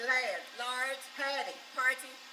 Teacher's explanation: If A came before R, they did not pronounce the R.